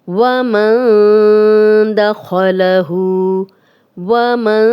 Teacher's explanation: یہاں پہ ہم غنہ کر رہے ہیں، نون کی آواز کو تھوڑا چھپا کر غنہ کر رہے ہیں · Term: اخفا